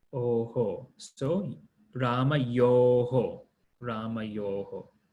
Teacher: notice how the visarga here matches the sound of the vowel before it. So it's O, so it becomes Oho.